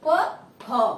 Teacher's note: ক, খ উচ্চারণ করতে কি তোমার স্বরতন্ত্র অনুরণিত হয় না এবং এগুলিতে কি বাতাস তোমার কম হয়, কম সময় থাকে। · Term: অঘোষ ধ্বনি